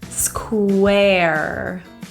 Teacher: Square is a difficult word, 3 consonants together. We're going to start with an SK, sk, and round your lips.